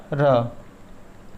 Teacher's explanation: लुंठित very very important है। जिह्वा की नोक बेलन की तरह लपेट खाकर तालु का स्पर्श करती है। आगे से जो है ये बेलन की तरह हमारी जीवा हो जाती है और जीवा की नोक वर्ष पर बार बार ठोक मारती है।